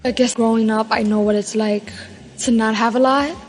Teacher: New York Latino English speakers have a particularly light L.